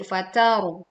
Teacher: Ro-nya sukun didahului huruf berharokat fathah, maka dibaca tebal.